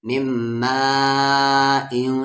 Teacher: مد کے سمبل کے بعد حمزہ ہے تو یعنی 3 سے 4 الف کے برابر